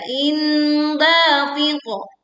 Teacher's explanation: Dalnya dibaca 2 harokat. Lalu kemudian qaf sukun dibaca memantul dengan suara yang tebal dan kuat. · Dengungkan saat kita membaca kasroh tanwin bertemu dengan dal. Suaranya samar, tidak terdengar tanwinnya in, tapi inda langsung ke dal. Indafiqo. Dalnya dibaca 2 harokat.